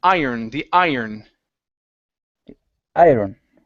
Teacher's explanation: even though there's an R, we don't say iron, pronouncing a hard R. It's iron, the iron.